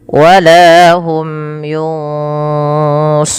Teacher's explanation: kita boleh membaca runnya sepanjang dua, empat atau enam harakat. Tapi kita ambil yang tengah-tengah saja, tidak terlalu panjang, tidak terlalu pendek.